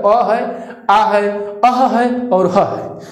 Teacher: अ, आ, अह और ह इनका उच्चारण कंठ से होता है।